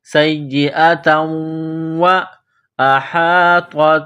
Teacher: سیئۃ، یہ گول تا ہے نقطوں والی، تا کے اوپر دو زبر تنوین ہے، اس کے بعد واو ہے، تنوین کو واو کے ساتھ ملانا ہے، پلس کرنا ہے، واو کو پڑھتے وقت ہونٹوں کو گول کرنا ہے